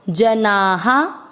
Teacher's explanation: ये य पर एक की मात्रा ये, ज में अ मिक्स करेंगे, जना। ना में आ की मात्रा है तो विसर्ग को पढ़ेंगे हा